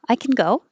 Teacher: If you don't hear the vowel at all, it's the positive.